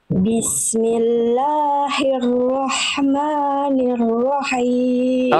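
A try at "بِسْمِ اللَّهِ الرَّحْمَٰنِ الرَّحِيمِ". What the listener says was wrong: H besar Bunda jangan melafalkan jadi H kecil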